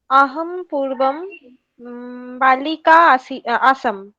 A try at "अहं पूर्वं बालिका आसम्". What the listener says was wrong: उत्तमं।